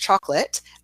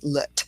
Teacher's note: Yes, so to come back to chocolate, chalk is our clearest syllable, and we drop the O, it's gone, and then we have a schwa or that light I sound at the end with lut. It can be confusing for students that there's an E on the end because it doesn't have a function in this word, whereas in a word like bike or bake or just late, it does.